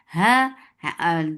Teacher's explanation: the last part of your throat will be engaged for ha, ha, da, 2 counts long, very sharp sound.